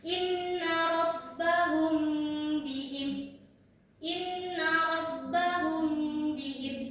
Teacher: cara membacanya itu samar-samar di bibir serta didengungkan, ditahan ee dua harakat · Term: ikhfa syafawi, Ikhfa syafawi